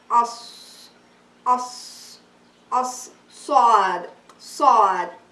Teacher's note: The makhraj for sad is the tip of your tongue when it touches the upper two incisor and the lower two incisor with a whistling sound between the upper and lower incisor.